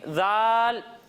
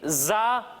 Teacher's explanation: जब हम जा की अदायगी करेंगे तो इसमें सीटी की आवाज़ आएगी